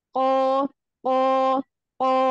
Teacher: Kalau huruf qaf setelahnya alif, maka itu tingkatan pertama, harus paling tebal.